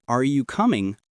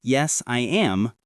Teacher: Try saying, Are you coming? with a rising tone and Yes, I am with a falling tone. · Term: intonation